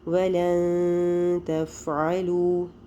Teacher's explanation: تا جو ہے وہ یرملون میں سے بھی نہیں ہے، با میں سے بھی نہیں ہے، حروف حلقی میں سے بھی نہیں ہے، تو باقی سارے حروف پر کیا ہوتا ہے، اخفاء، یعنی نون کی آواز کو چھپا دیں گے